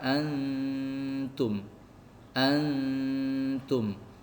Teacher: Jadi bacanya agak ditahan lama dengungnya. Dengungnya itu dengung samar. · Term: dengung ikhfa